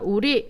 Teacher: 혀끝을 잇몸에 가볍게 대었다가 떼는 소리를 우린 탄설음이다